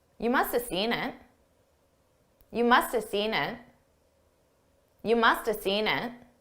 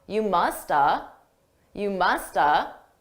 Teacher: But notice I didn't actually say have. I reduced that entirely to just uh you musta.